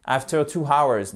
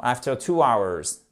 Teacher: hour, c'est un de ces rares mots en anglais où on ne prononce pas le H